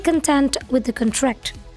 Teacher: nah di situ ada stress di content jadi t-nya di tekan